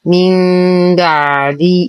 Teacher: الحكم إقلاب. تقلب النون الساكنة ميما عند الباء مع غنة كاملة